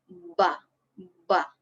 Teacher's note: bibir bawah dan bibir atas posisi rapat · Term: asy-syafatain